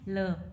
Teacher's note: ल में भी वोकल कॉर्ड्स में वाइब्रेशन होता है तो इसलिए वॉइस्ड हो जाएगी। एलोवेलर है, लेटरल है, ऑरल है